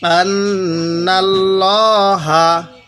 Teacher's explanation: আল্লাহ শব্দের লামের পূর্বে জবর থাকলে আমরা ওই লামটাকে মোটা করে পড়ব। তাহলে আন্নাল্লাহা, আইন জবর আ, লাম মিয়া খারা জবর লা, আলা।